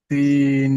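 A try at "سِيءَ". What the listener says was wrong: সি টান দেন, সি ইয়ার উপরে মাদ এসছে, আর এখানে তো মাদ্দে মুত্তাসিলের কায়দা, তাই এখানে টান দিয়ে পড়তে হবে। 2 থেকে 3 আলিফ মিনিমাম টানতে হবে।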